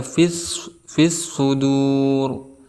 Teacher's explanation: Karena ada huruf alif lam bertemu dengan salah satu huruf al-syamsiyah yaitu shad. Ciri daripada al-syamsiyah ini ditasdidkan langsung kepada huruf shadnya